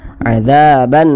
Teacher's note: huruf ro sukunnya ini dibaca tebal dibaca takhim